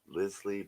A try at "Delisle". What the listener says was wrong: Daniel Delisle. You don't pronounce the S. So Delisle, French.